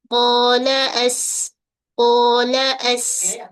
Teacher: Qa ni huruf yang tebal, terbuka. Dia terangkat pangkal lidah tapi infitah bahagian tengah lidah. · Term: huruf qaf